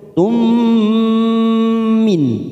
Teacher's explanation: Ada harakat dumat tanwin pada huruf ta marbut tun bertemu dengan mim namanya idgham bighunah